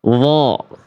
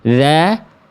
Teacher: dho tebal pangkal lidah terangkat. Dzal tipis pangkal lidah terhampar.